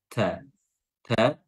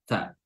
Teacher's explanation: Huruf ta keluarkan hamsnya ta ta, dan makhraj huruf ta adalah ujung lidah bertemu dengan pangkal gigi seri atas